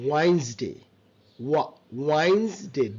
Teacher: ডি silent, আর এস এর সাউন্ডটা জেড এর মতো হবে